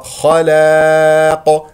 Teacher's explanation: الخاء مفخمه مرتبه ثانيه لان مفتوحه اللام مستفل و لا نفخم نقول خلاق خطا خلاق افتح الفم